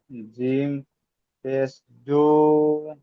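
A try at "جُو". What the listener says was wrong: জিম ওয়াওটা যুক্ত করবেন তো। জিম ওয়াও পেশ, এই তিনটে একসাথে বলতে হবে। পেশ তিনটে একসাথে জুড়ে বলতে হবে।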